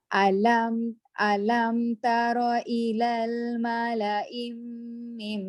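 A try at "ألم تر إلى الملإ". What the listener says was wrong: Malaim tu tak dengung. Malaimim. I tu satu harakat. Satu baris je. Mala.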